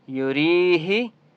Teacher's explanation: یریہی یا مدہ ہے، را کو ایک الف کی مقدار کھینچ کر پڑھیں گے